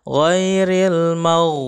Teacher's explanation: huruf ghainnya tidak boleh memantul, ya, karena tidak memiliki sifat qalqalah, dan juga tidak boleh mengalirkan udara karena dia bukan sifat hamas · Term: ghain sukun